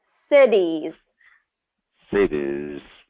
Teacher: So first syllable stress, cities.